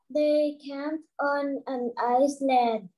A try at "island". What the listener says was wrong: Okay, we don't say Iceland, we say island.